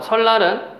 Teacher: 설날은 니은이 리을 뒤에서 유음으로 바뀌는 순행적 유음화